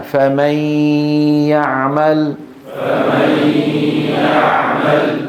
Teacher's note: عليك ان تنطق صوتين معا في ان واحد الصوت الاول من الفم يا والصوت الثاني من الانف غنه